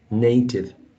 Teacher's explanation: The sound here, A, is a diphthong, right? Not a monophthong.